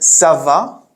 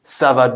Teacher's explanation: if you have a rising intonation you got it you you made a question · Now, that's not to say all the questions are made that way, but that's one of the most common ways. So saying ça va with a rising intonation makes it a question. And, well, responding with ça va bien, a descending intonation or falling intonation, you're making a just normal sentence as the response.